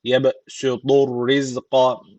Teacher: B harfi cezim almış. Kalkale tecviti var. Birazcık vurguluyoruz. · Rizka şu z keskin peltek değil